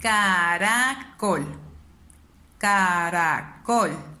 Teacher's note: yo levanto más o hago más énfasis en col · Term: sílaba tónica